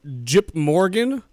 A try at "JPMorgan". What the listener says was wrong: Was JPMorgan some sort of like joke about it being a JIP to bank there, or were you just mispronouncing